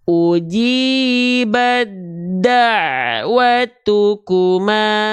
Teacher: leburkanlah bunyi huruf ta sukun kepada huruf Dal bertasdid yang sama makhrajnya namun beda sifatnya dileburkan tanpa ditahan dan tanpa disertai dengung maka ketika kita baca begini uji langsung ke dalnya tuh ya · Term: Idam mutajanisain